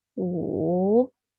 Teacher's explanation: Falling and then rising. Falling from 2 to 1 and then rising from 1 to 3. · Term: third tone